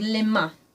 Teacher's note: there's a very nasal sound at the ending of that word